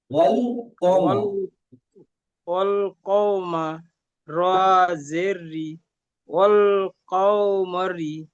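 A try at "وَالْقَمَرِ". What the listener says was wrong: ওয়াল কমারি কওমা নয় ওয়াল কমারি ওয়াল কমারি ওয়াল কমারি ক টান হবে না ওয়াল কমারি আমি আপনার বোঝার জন্য বলেছিলাম ওয়াল কমারি ওয়াল কমারি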